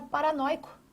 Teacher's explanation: Porque nós temos aqui um ditongo aberto oi